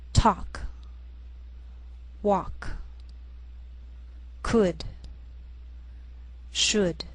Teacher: sometimes L can be silent